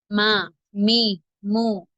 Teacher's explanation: இரு உதடுகளின் காய்ந்த பகுதி வெளிப்பகுதி சேர்ந்து விலகும் போது உண்டாகிறது.